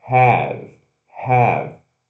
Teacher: Se pronuncia o H, né? Esse aspirado, o AEB, have.